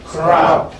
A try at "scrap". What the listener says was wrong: Crap and not scrap. Scrap would have been something like this. Scrap. Scrap. Scrap.